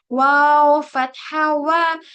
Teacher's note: वाव में क्या करना है? पूरे होठों को गोल करना है।